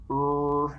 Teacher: round our lips as we produce an er as well but er is the one sound in english that is a retroflex sound so the way i produce it is i curl my tongue